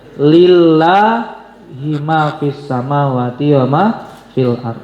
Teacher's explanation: Hanya satu saja lafal Allah yang dibaca tipis, tidak dibaca tebal, tidak dibaca tafkhim, tapi dibaca tarqik dalam tajwidnya. Yaitu apabila lafzul jalalah lafal Allah sebelumnya berharakat kasrah.